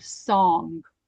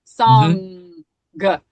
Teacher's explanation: My N touches my my tongue touches the roof of my mouth in the very back of my mouth